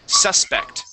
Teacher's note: The accent is at the beginning of the word